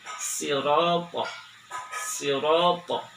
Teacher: Meskipun sama berasal dari ujung lidah, namun ketika menggunakan huruf shad, ujung lidah ketemu dengan gigi depan sebelah bawah, tapi si langit-langit lidah sebelah dalam itu mengangkat ke atas sehingga terdengar bunyi tebal